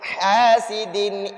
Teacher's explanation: مطلب اس کو ہم ناک میں نہیں چھپائیں گے اس میں ہم غنہ نہیں کریں گے حاسدن اس حمزہ کی وجہ سے اس کو ہم حاسدن پڑھیں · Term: اظہار